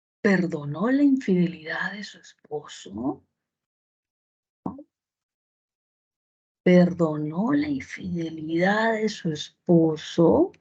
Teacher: sienten esa curvita al final que sube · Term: tono final ascendente